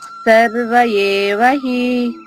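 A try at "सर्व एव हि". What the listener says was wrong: సర్వ ఏవ హి, ఏ అనేది గొంతు నుంచి రావాలమ్మా. సర్వ ఏవ హి ఆగాలి, సర్వ తర్వాత ఆగి ఏవ హి.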